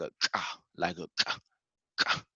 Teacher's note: its pronunciation is generally harsh. The back part of the palate is contracted while the breath explodes outward. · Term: kaf